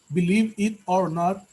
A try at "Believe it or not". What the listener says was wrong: We don't say believe it. We don't cut. No separamos es believe it or not.